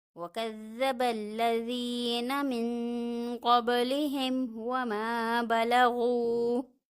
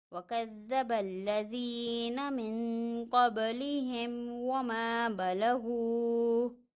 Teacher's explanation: یہاں پہ ہم نے دیکھا میم ساکن ہے، میم ساکن کے علاوہ حرف آ رہا ہے واو، تو یہاں پہ اظہار شفوی ہو رہا ہے، غنہ نہیں ہوگا، میم کو ظاہر کر کے پڑھنا ہے۔